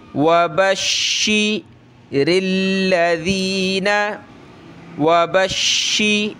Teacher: ज़ीन ज़ाल पे ज़बान निकालें